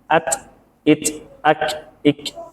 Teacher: semua huruf hamas itu lebih banyak alirannya ketika sukun daripada berharokat, termasuk kaf dan ta